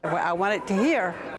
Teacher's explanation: You can hear the glottal stop instead of a T.